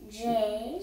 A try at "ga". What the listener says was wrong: Not anymore j, remember we said switch to g. Gay, and k.